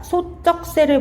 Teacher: 두 모음 사이에서 나는 된소리로 분류가 되어 있는데 오, 어 사이에 있는 지읒이 아무런 이유 없이 쌍지읒으로 발음이 되고 있습니다